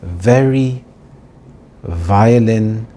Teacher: your top teeth touch the bottom lip very slightly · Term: V sound